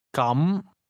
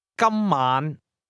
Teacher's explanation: the word for in that case is pronounced with a mid-rising tone, while the word for today has a high level tone